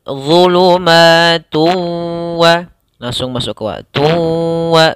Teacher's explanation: Sama sebagaimana sebelumnya, yaitu di sini hukum bacaannya idgham bi gunnah, sehingga tidak dibaca zulumatun wa ra'dun, tapi langsung masuk ke huruf wawnya sambil ditahan gunnahnya